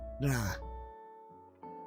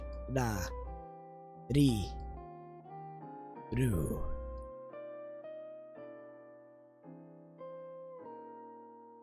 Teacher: in Japanese, R's are really a cross between R and L. So, what a lot of people suggest is when you're starting out, pronounce R's like L's, and that'll sound closer to native Japanese sound.